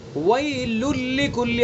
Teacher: اب دیکھیے پتہ بھی نہیں لگ رہا ہے کہ تنوین ہے یا نہیں ہے، تو تنوین کی آواز بالکل ختم ہو گئی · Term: ادغام